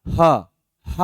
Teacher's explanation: ह में थोड़ा सा आपको कंपन का एहसास होता है